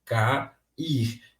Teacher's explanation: perceba que o a e que o i eles são dois fortes então eles não podem coexistir na mesma sílaba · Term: iato